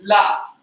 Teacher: इसके बाद अगर जो दंत से आप देखें तो जो अंतस्थ में एक ध्वनि बताई थी ला, कि पार्श्विक ध्वनि है ये। इसमें जीभ ऊपर जाकर ऊपर के दांतों के किनारे पर, मसूड़े पर, गम पर टिक जाती है और फिर पार्श्व बनते हैं दोनों। तो इसको भी हम दंत में ही लिख देते हैं, वो ध्वनि हो गई ला।